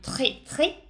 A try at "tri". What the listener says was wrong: attention à la dernière lettre. C'est la lettre I.